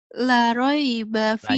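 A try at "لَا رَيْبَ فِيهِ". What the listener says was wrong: La-nya panjang, Neng. Kan ada alifnya.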